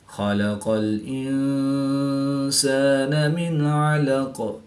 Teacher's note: نون ساکن کے بعد عین حروف حلقی میں سے ہے تو یہاں پر اظہار ہوگا یعنی غنہ نہیں کریں گے بلکہ نون ساکن کو ظاہر کر کے پڑھیں گے